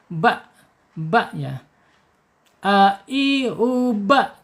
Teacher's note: Jadi makhraj bawah kemudian langsung ke makhraj tengah. Kemudian secara sifatnya ada di asyidah ya, ketika dia sukun akan tertahan suaranya ya.